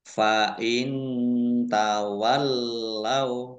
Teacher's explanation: nun sukun bertemu dengan huruf ta bacaan Ikfa dibaca samar-samar